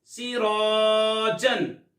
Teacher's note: اب را کے اوپر زبر ہو، را کو پر یعنی موٹا پڑھتے ہیں، تو الف کو بھی پر یعنی موٹا پڑھیں گے۔